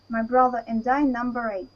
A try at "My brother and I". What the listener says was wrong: As you can see, the second part is not pronounced properly. You said, my brother and I. You should pronounce it together. My brother and I.